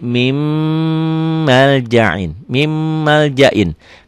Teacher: Nun sukun, nun mati ketemu mim. Ditulisnya min maljain, dibacanya jadi mim maljain. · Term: idgham bigunnah